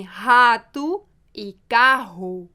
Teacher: um som gutural que vem do fundo da garganta